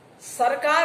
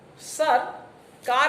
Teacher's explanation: તમારા આરોહ અવરોહમાં જ ફેર પડ્યો, બીજો કશો ફરક પડ્યો નથી. · આપણે જોઈ શકીએ છીએ કે વાક્યો એકબીજાથી ભેદક છે. અર્થભેદ કરનારું તત્વ ધ્વનિઓના ઉચ્ચારણ વચ્ચે આવતો વિરામ છે. આ વિરામને જંક્ચર કહેવામાં આવે છે.